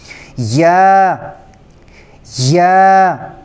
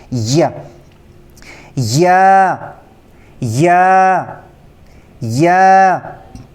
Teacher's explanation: زبان کا جو بالکل درمیانی حصہ ہے وہ اوپر تالو کی طرف قریب لے جانے سے یہ حرف ادا ہوتا ہے. لیکن جب ہم زبان کا درمیانی حصہ اوپر تالو کے قریب لے جائیں گے تو جو زبان کا درمیانی حصہ اس کو تھوڑا سخت کر لیں گے.